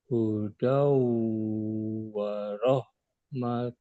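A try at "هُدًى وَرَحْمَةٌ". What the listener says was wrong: Warahmah. Jadi ketika kita berhenti di huruf tak marbutoh atau tak yang bulat, itu dibacanya seperti huruf H, Pak. Warahmah. Tanpa peduli apapun harokatnya.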